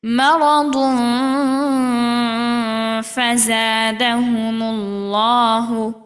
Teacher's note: তানভিনের বামে ফা অর্থাৎ ইকফা আমরা ফার মাখরাজের সাথে স্পর্শ করে গুন্না সহ পড়ব